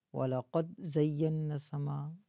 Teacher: دال میں دال کو ہلا کے پڑھیں گے. وَلَقَدْ زَيَّنَّا السَّمَاء، بالکل بھی دال پہ آواز بند کر لینا، یہ بھی ٹھیک نہیں، ورنہ قلقلہ رہ جائے گا.